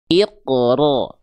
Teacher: getarannya sedikit aja. Tapi walaupun sedikit, tetap tegas, lugas, dan jelas. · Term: takrir